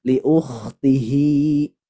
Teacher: Keluarnya dia dari aqsal halqi atau dari pangkal tenggorokan. Tidak ada hubungannya sama sekali dengan dada. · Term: huruf H